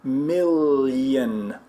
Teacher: it's like an l and a y right there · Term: ly sound